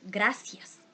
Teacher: in most dialects of Spanish in the Americas, the letter C and Z are pronounced as S